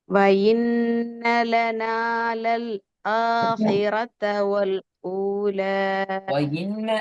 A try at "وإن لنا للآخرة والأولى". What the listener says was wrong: இன்னங்கிறது பிழை. ஈக்கு சவுண்டு போகக்கூடாது, அதான் பிழையாயிக்குது. وإن لنا وإي.